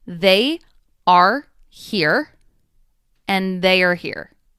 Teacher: We insert either a Y or a W to link the two sounds. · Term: Y sound